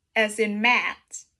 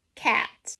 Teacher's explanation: It's short and quick. Your mouth is fairly open and you say it like ah. Also remember your tongue is relaxed, laying flat in the middle of your mouth.